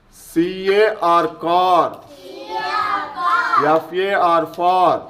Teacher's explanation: to produce this sound we should put our tongue లో at the back of our mouth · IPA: /ɑː/